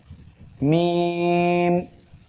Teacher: এই অক্ষরটি ঠোঁটের শুকনা অংশ হইতে মিম উচ্চারিত হয়